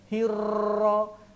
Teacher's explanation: Ra jangan bergetar terlalu banyak.